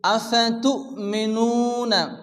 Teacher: তু এখানে ঝটকা হবে, হামজা সাকিন নু মাদ্দা একালিফ টেনে পড়তে হবে।